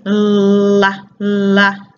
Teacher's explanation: our tongue tip is touching this bumpy part called the alveolar ridge behind our teeth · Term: L sound